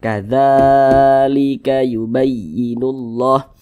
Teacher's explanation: panjangnya itu dua harakat dua harakat itu kira-kira temponya dua ketukan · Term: dibaca panjang